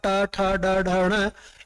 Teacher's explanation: पूरा का पूरा टैवर्ग कहां से बोला जाएगा? मूर्धा से बोला जाएगा।